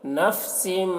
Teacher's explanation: تنوین کے بعد میم ہے حروف یرملون میں سے، تو تنوین کو میم سے ملا کر غنہ کے ساتھ پڑھیں گے، اس کو ادغام ناقص کہتے ہیں۔